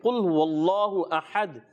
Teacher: قاف موٹا رکھنا ہے، ہا کو باریک رکھنا ہے، اور دال میں قلقلہ کرنا ہے